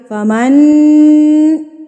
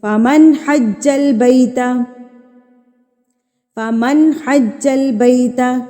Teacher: نون کی آواز کو ظاہر کر کے پڑھیں گے اور فوری سے ادا کریں گے. نہ تو اتنا لمبا کریں گے کہ وہ گنہ لگے اور نہ اتنا شارٹ کریں گے کہ وہ اکفا کو ظاہر کرے۔ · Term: اظہار